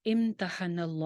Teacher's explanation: یہاں پہ لفظ جلالہ موٹا ہوگا کیونکہ نون کے اوپر زبر ہے.